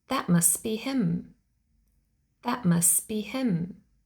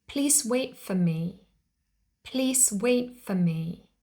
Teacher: This usually happens between two words, where the first word ends in a T sound and the next word starts with a consonant sound. Dropping the T makes it easier to pronounce the consonant cluster.